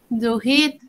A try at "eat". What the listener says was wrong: Nomás que estás mencionándolo con el to. No menciono en el to. Aquí el to es, no existe, ¿ok? Nomás decimos eat. Eat.